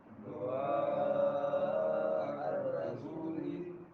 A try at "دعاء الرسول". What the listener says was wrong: دعا نہیں ہے دعاء الرسول